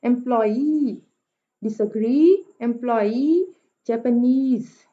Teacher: इसमें 3 सिलेबल्स होते हैं और पहले 2 जो है वो अनस्ट्रेस्ड होते हैं, आखिरी जो है वो स्ट्रेस्ड होता है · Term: एनापेस्टिक